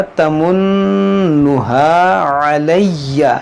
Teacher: یہاں نون مشدد ہے، اس میں غنہ ہوگا